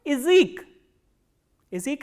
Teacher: So, what happens is when ya is in unstressed position, the sound of ya becomes e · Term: reduction